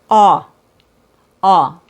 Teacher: The aw sound, or I call it AW sound because they don't have a name for it, is produced by dropping the jaw and then rounding out the bottom lip. So you drop the jaw and make the bottom lip round, and your tongue should stay low. Aw, aw. The upper lip shouldn't move, so only the bottom lip moves and it's rounded, and you drop your jaw.